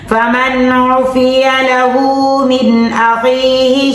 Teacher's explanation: یہاں غنہ نہیں کرنا کیونکہ آگے حروف حلقی آ گئی